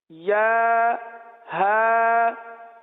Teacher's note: یا جو ہے یہ وسط لسان، وسط تالو، زبان کے درمیان اور تالو کے درمیان سے ادا ہوتا ہے · ہا جو سینے سے متصل حلق ہے یہاں سے ادا ہوتا ہے